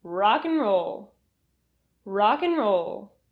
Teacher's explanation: and is reduced to n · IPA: /'n/